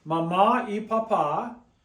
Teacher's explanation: you're stressing that a at the end it breaks the rule it gets an accent Papa has an